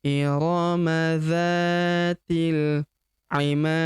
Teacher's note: Dan huruf pemberhentian huruf di di sini kita sukunkan atau kita matikan. Kemudian karena dia sukun atau mati ya maka kita pantulkan atau kita qolqalahkan